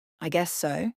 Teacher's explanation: if you say it with a rising tone I guess so it sounds playful or uncertain